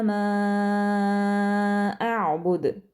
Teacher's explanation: दाल पर हम कलकला कर रहे हैं, एंड वाला हर्फ है, क्योंकि उसके ऊपर हम साकिन लगा रहे हैं, क्योंकि आयत का अख्ताम हो रहा है, वक्फ का रूल अप्लाई करेंगे, और चूँकि दाल हरूफ कलकला में से है, जब भी इसके ऊपर जज़म होगी हम कलकला करेंगे, ठीक है।